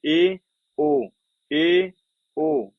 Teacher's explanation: मुख द्वार का लगभग आधा बंद होना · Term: अर्ध समृद्ध